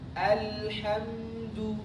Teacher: Karena tidak disempurnakan sifat lam. Sifat lam itu diantaranya adalah dia mengalir suara pertengahan. Ngalir sedikit aja, jangan al.